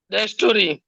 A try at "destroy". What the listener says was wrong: ডিস্ট্রয়, খেয়াল করবেন, এটা ডিস্টরি না, ডিস্ট্রয়। No, ডিস্ট্রয়। ট্রয়। No, টরি হবে না, ট্রয়। এটা ট্রয়। ডিস্ট্রয়, ডিস্ট্রয়।